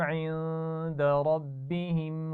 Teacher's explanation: عند ربهم اس نون ساکن پر غنہ ہوگا. ربهم میں را کو موٹا پڑھنا ہے.